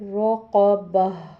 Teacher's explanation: ہا کی آواز صحیح سمجھ میں آئے، الف کی آواز نہ آئے